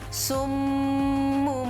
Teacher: Jadi jika kita melihat ada iqlab di Al-Quran, tidak akan ada nun mati ditulisnya pakai mim, tidak, tetap saja nun. Tetapi cara pengucapannya seolah-olah nun ini kita gantikan kepada huruf mim